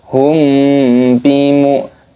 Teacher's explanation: ada mim sukun bertemu dengan huruf ba ini hukumnya adalah ikhfa syafawi, disamarkan. Hum bi mu'minin, minnya panjang matopi'i 2 harokat dan dimatikan pada hurufnya karena ada tanda waqaf matahari sukun seperti itu.